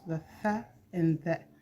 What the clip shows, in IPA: θ, and ð